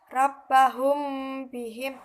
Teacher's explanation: karena ada huruf mim bertemu dengan huruf ba sehingga cara membacanya harus didengungkan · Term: ikhfa syafawi